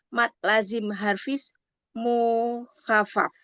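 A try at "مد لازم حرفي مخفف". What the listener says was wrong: Bukan harfis, tapi harfi mukhaffaf.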